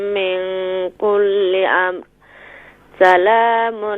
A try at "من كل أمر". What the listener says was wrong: من کل امر. یہاں را کو بھی کلیئر کریں.